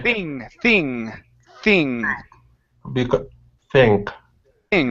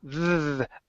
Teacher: the voiceless th tongue between the teeth no vibration in your in your vocal cords